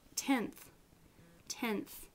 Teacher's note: so it becomes a bilabial alveolars to dentals t tenth tenth you can see that it changes from about alveolar and your tongue moves up to make it a dental